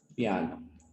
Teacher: la A es el núcleo y esta vocal I no llega a ser el núcleo. Se conoce como semivocal.